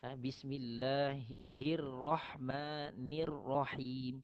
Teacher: Dia perlu sembunyikan sikit getaran ra.